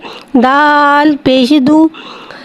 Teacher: दाल के ऊपर पेश है, पेश को होठों की गुलाई के साथ अदा करके पढ़ेंगे।